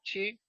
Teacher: se producen en el centro del paladar